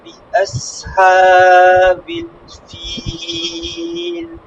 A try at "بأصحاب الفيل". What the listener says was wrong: হ্যাঁ, বিআস হবে না, বিআস, সদ এটা। বিআস, বলেন। বিআস, বিআসহাবিল ফিল।